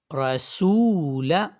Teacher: اب دیکھیے اس میں رو کے اوپر زبر تھی، ہم نے اس کو ایک تو موٹا پڑھا اور اس کو لمبا نہیں کیا۔ سو کو ہم نے تھوڑا سا لمبا کیا، کیوں؟ کیونکہ واو مدہ اس میں موجود تھی